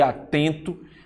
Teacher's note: são aquelas palavras cuja tonicidade silábica vai ocorrer na segunda sílaba quando eu conto da última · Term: palavras paroxítonas